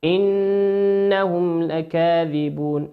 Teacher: النون هنا في كلمة إنهم نون مشددة تغن بمقدار حركتين.